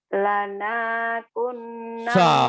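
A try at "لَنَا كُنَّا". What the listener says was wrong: Masya Allah. Kenapa nanya jadi panjang? Kan gak ada pemanjangnya. Nanya pendek. Pendek tidak panjang. Gak ada pemanjangnya. Yang panjang yang ku-nya.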